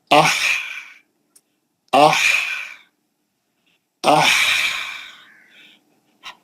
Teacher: हवा फेंकना बस और वो भी कहां से हलक के बीच में से निकाल लो जैसे आ ऐसा हा लंबा रहता हवा निकलती रहती बहुत देर